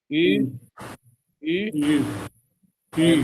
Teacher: We can start with O And when we want to end this sound, we can add U, but I don't add clear sound of U.